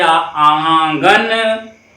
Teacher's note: तो इसमें नाक और मुख से दोनों निकल रहा है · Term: अनुनासिक